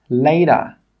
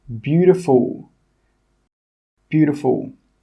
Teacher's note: in my accent I like to change a lot of T sounds to D sounds